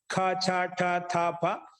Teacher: ద్వితీయ వర్ణాలు ఖ ఛ ఠ థ ఫ ఇవన్నీ కూడా మహాప్రాణాలే